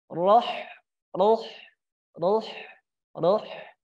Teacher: Huruf ha berada di tenggorokan bagian tengah